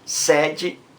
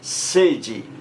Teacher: a palavra sede com esse E aberto e sede com E fechado, você vê que o som é diferente · Sede, som aberto. Sede, som fechado.